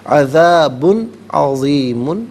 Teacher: میم ساکن کے بعد عین آ رہا ہے تو یہاں پر بھی ناظرین میم ساکن کو نارملی پڑھیں گے، وَلَهُمْ عذاب میں با پر دو پیش کی تنوین ہے، اس کے بعد حرف علقی عین آ رہا ہے تو یہاں پر اظہار کریں گے، یعنی اخفا یا غنہ نہیں کریں گے۔ عذاب عظیم، یہاں وقف کریں گے تو عذاب عظیم پڑھیں گے۔